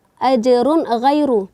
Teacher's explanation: Tanwin bertemu dengan huruf ghain, maka hukumnya di sini yaitu izhar halqi, yaitu dibaca dengan jelas dan terang, tidak perlu ada dengung atau samar-samar di situ.